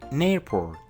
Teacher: Ahora volvemos a ver que la palabra en termina con un sonido consonante, seguido de la vocal A de la palabra airport. O sea que la N de la palabra en le pertenece a la palabra airport.